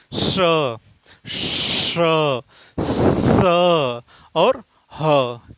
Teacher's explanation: यानी गर्म हवा बाहर निकले और हल्की सीटी की आवाज आए। जैसे आपका श स और ह।